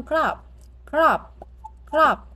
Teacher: O ngắn thì chúng ta đọc giống như âm o của tiếng Việt nhưng ngắn hơn, bật nhanh hơn